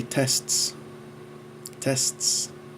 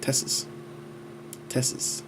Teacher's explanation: Tests. But in African American English, they don't like that consonant cluster, so they call it tesses